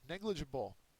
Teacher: it is a first syllable accented